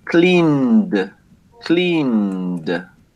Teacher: The pronunciation of the N is voiced. Therefore, the correct pronunciation for clean is going to be D.